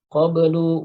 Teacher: ba-nya dibaca qalqalah, tapi karena ba bukan termasuk huruf isti'la, maka qalqalahnya tarqiq atau tipis